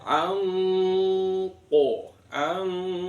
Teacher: Jadi nun sukunnya berbunyi seperti kaf, tapi lebih mendekat dengan ko